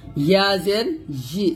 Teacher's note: ইয়াজের ই উচ্চারণ করি, এটা করা যাবে না। ইয়া যখন উচ্চারণ করবেন জিহ্বার মধ্যখান উপরে তালুতে লাগবে, মানে তালুতে, এক কথায় তালুতে লাগবে।